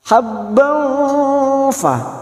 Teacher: kita samarkan bunyi fathah tanwin dua atau tiga harakat